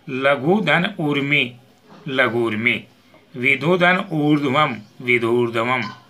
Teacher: ऊ ह्रस्व के बाद ऊ दीर्घ होने पर दोनों के स्थान पर ऊ दीर्घ हो जाता है। ऊ प्लस ऊ बराबर ऊ। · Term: दीर्घ ऊ